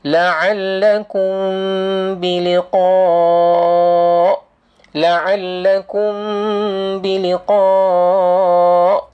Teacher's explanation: Namanya ialah mad wajib muttasil. Mad wajib muttasil. Baca 4 atau 5 panjangkan.